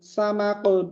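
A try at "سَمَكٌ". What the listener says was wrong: হ্যাঁ মাশাআল্লাহ, সামাকুন হবে না, সামাকুন পাতলা হবে।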